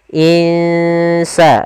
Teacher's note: Kita samarkan nunnya ke huruf sin. Insa, dan itu ikhfanya ikhfa tipis.